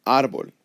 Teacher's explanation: However, my voice, when I say the word árbol, my voice goes up on the A